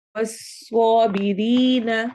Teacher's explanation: वस स्वाद को मोटा करना है, बिरी या मद्दा करनी है।